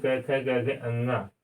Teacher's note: ग आवाज कहाँ से आ रही है? कंठ से। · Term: कंठव्य व्यंजन